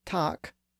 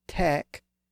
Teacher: tak moved up to tek during the Great Vowel Shift, and then later it moved up to take.